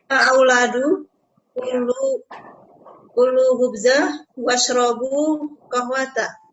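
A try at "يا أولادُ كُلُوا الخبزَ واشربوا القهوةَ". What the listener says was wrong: Iya, disambung Bu. Washrabul begitu. Ulang lagi.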